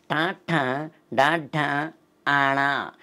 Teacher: నాలుకని పైకి తన్ని కింద తీసుకొస్తామండి, అంగుడి అంటాం. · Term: మూర్ధన్యాలు